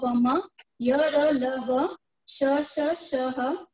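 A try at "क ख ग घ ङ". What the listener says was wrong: अब देखिए आपने क्या गलती की है। क ख ग घ न बोल दिया, च छ ज ज न बोल दिया, ट ठ ड ढ न बोल दिया, चारों में न का उच्चारण कर दिया। पहले में ग है, दूसरे में य है, दूसरे में न है, चौथे में न है और पांचवें में म है। ये खास ध्यान रखना है।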